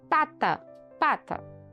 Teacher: ela é oclusiva bilabial e desvosada